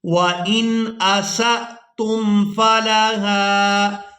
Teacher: وَإِنْ أَسَأْتُمْ فَلَهَا، وَإِنْ یہاں سین کو حمزہ ساکن کے ساتھ ملائیں گے تو جھٹکے کے ساتھ ادا کریں گے